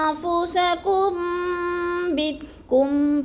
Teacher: نون ساکن کے بعد حرف آ گیا تو ادھر اخفا، آواز کو ناک میں چھپا کر پڑھیں گے یعنی اخفا کریں گے، جیسے انفسکم کم